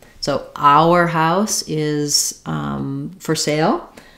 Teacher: And then our, the full version sounds like our, with a little glide. So we have a triphthong here of the ow diphthong plus the sound, the w connecting the 2 vowels